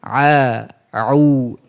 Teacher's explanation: huruf Ain tidak masuk ke hidung